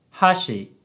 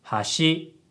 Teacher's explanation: if you say hashi, it has a high-low pitch pattern, and it means chopsticks. But if you say hashi, it has a low-high pitch pattern, and it means bridge. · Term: pitch accent